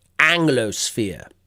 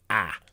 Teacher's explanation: Notice the ah in British English. So far back, ah.